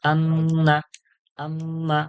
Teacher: আন্না আর আম্মা দুটোকে নাকের মধ্যে গুনগুন করে, গুনগুন করে আওয়াজ করে পড়তে হবে, এক আলিফ পরিমাণ ধরে। এক আলিফ টান যতটা, যতক্ষণ ধরে এক আলিফ টান দিয়ে পড়ি, সেইভাবে এক আলিফ টান পরিমাণ এই গুন্নাটাকে দিয়ে বলতে হবে।